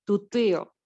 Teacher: آئین سائلنٹ ہے، اس لیے آئین کے اوپر ہماری آواز جو ہے وہ رک جائے گی